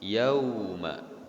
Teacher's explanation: Karena dia termasuk dalam mad layin, ya. Yauma, satu kali ayunan, yakni mad layin, panjangnya 2 harokat, ya. Tidak yauma kecuali dia waqaf.